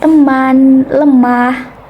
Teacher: madya tengah dengan posisi mulut semi tertutup atau netral